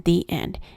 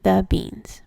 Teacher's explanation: The word the is long when used before a word that starts with a vowel, as in the end, and schwad when before a word starting with a consonant, as in the beans.